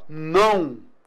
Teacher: Eu tenho vogal AN e semivogal U.